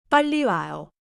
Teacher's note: 빠른 R처럼 튕기지 말고 가볍게 조금 길게 유지해요. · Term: doubled 리을리을